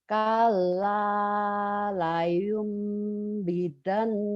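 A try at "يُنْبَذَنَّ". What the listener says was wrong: Badan, bidan mah di rumah sakit, bidan mah badan. Kalla la yunbadanna fil hutamah.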